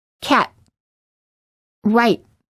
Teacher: do not release the T just let your tongue stay on top touching the gum Ridge with no air coming out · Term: held T